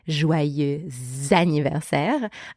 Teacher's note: And that is because of the infamous liaison. There is what's called a liaison between the words joyeux and anniversaire, and that liaison brings the Z sound between the two words.